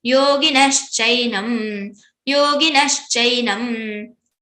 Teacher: Shaljam wala sha, that sha, which we recite with the soft palate, with the taluhu. So talavya shakara. · Visarga got converted into shakara.